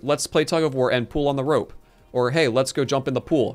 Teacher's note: i say the word p-u-l-l and p-o-o-l the same